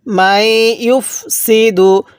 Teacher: যদি নুন সাকিনের পরে এরকম তাসদিদওয়ালা হরফ থাকে তাহলে ওই জায়গার মধ্যে আমরা এই নুন সাকিনটাকে বাদ দিব।